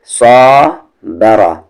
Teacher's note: را کو ہیوی کریں گے کیونکہ اس پہ زبر ہے